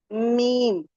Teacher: Lips के outer part से अदा होता है। हमें मीम कहना है तो हमारे लिप्स के जो आउटर पार्ट हैं वो मिलेंगे